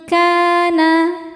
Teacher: Sebab ada alif sebelumnya fathah bacanya panjang dua harakat. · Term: mad thobi'i